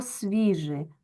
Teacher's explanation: буква С передає звук с одразу ми його записуємо м'яким тому що він стоїть перед пом'якшеним в · ці свистячі з ц с ДЗ Вони стають м'якими перед пом'якшеним в